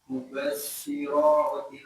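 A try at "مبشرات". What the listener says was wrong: shinnya lebih banyak udaranya.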